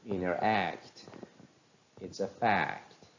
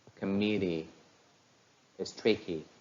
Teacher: Rhythm because they consist of the same number of syllables and the place of stress syllable is on the last part of the utterances